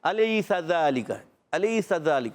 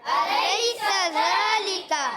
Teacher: سین سیٹی والا حرف ہے حروف اصلیہ مخرج کے لحاظ سے حروف صفیریہ صفت کے لحاظ سے سین پر زبر ہے حرکت ہے نہیں کھینچیں گے ذالک اب